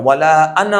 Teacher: تو انا میں الف نہیں پڑھا جاتا